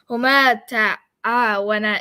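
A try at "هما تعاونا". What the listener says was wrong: But your second one was short. huma ta'awana. Huma should end with So, but you didn't end it with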